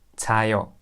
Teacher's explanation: Korean people don't say 자아요 because there are two double A. So because of the pronunciation, we just say 자요.